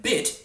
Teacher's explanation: But in bit, there's no velar consonants in the whole word, so it sinks down into the middle.